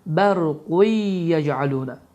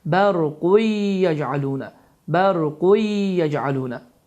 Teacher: Bu zaman idğam ma'luğunna qaydası baş verir, n səsi itir və n səsi yə səsi ilə əvəz olunur və səs burundan çıxaraq 2 hərəkə miqdarında uzadılır